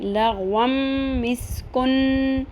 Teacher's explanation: اب یہاں پہ ہم غنہ ضرور کریں گے، ناک کی ہڈی میں آواز ٹھہرائیں گے لیکن اخفا نہیں کریں گے